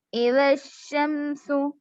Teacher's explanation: Direct شین سے ملانا ہے, الف لام کو نہیں پڑھیں گے کیونکہ یہاں پر شین حروف شمسی میں سے اس سے پہلے الف لام آ رہا ہے تو الف لام دونوں کو نہیں پڑھ رہے ہیں.